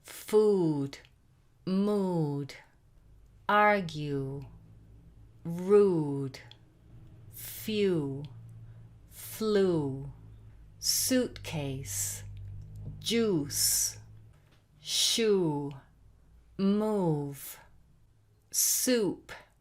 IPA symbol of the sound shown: u: